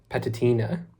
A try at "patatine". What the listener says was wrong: Patatine. It's an e.